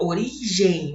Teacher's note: o E é maior som, o M com som de semivogal, do maior para o menor, ditongo decrescente